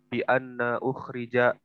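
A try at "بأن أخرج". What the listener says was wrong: masuk ke fi'il tidak dibaca anna.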